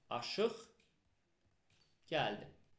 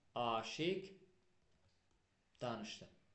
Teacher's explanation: samitlə başlayan şəkildə söz artıranda sondakı q'lar yenə də kar tələffüz olunur.